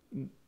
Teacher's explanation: the R can be dropped or get the guttural ending